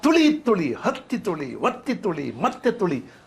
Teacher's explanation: ಹತ್ತಿ ಒತ್ತಿ ಮತ್ತೆ ಅನ್ನುವ ಒತ್ತಕ್ಷರಗಳು ಇವೆಯಲ್ಲ ಆ ಒತ್ತಕ್ಷರಗಳ ಫೋರ್ಸ್ನ್ನ ತರ್ತಾರೆ